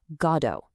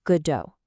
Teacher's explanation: with the emphasis right on that first syllable